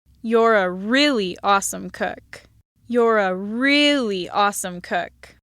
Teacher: an L plus H star pitch accent on the word really